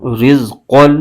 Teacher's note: قوف حروف مستعلیہ کا حرف ہے، اس کو پر یعنی موٹا کر کے پڑھنا ضروری ہے